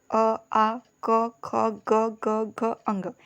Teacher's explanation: कंठ से अ, आ, क, ख, ग, घ, अंग, इन सब का उच्चारण होता है